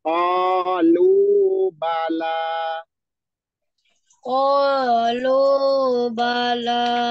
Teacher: ba-nya dicepetin ya, ba-nya enggak panjang. La-nya baru panjang.